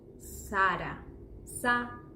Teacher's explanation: the A goes sort of like A, but our A's are very open